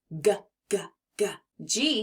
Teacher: that g sound it's bold and strong almost like a growl from the back of your throat to make the G sound the back of your tongue is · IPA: /g/